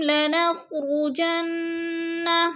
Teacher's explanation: نون مشدد ہے، غنہ کریں گے